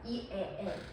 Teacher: 그래서 여러분 이에 할수록 이에 할수록 혀가 낮아집니다.